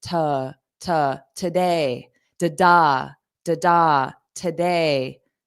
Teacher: The first sound is unstressed in this word. So it sounds like an unstressed today, da, today.